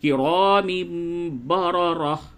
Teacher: دونوں را کو پڑ کر کے یعنی موٹی کر کے پڑھیں گے